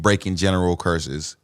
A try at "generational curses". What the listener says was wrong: Generational. You said general. You said general curses, and I was like,